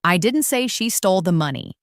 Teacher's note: First, emphasize the word I. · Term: emphasis